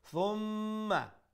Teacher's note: the mim has a shadda so we will pronounce the mim with ghunna